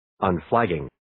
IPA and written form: ən'flægiːŋ (Unflagging)